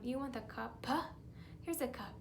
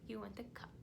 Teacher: Because if you're doing it too much, then it's gonna kind of distort the sound, and it's not a cuppa, right? We don't want to put that extra schwa sound on the end. We want to make sure it's a nice, clear p sound.